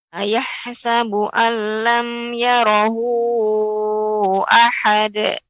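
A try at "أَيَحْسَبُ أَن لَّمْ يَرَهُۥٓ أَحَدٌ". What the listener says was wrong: Kemudian tadi pengucapan ha jangan sampai ayahsabu, ayah, ya. Tapi benar-benar sempurna ayahsabu.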